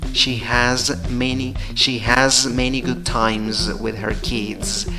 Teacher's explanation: es la pronunciación de has va con Z. Times va con Z. Después de la M viene la Z. Kids. Después de la D también sigue la Z, ¿ok?